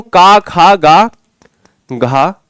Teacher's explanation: शुरू के 2 अक्षर अघोष होते हैं